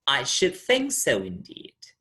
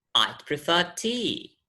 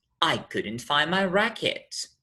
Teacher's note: we fall towards the end the intonation is high falling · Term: high drop